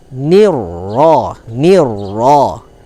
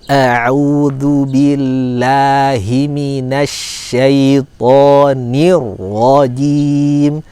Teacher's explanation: ro tasdid, maka di hati-hati jangan terlalu jelas takrirnya ya. Karena untuk ro tasdid dia agak disamarkan.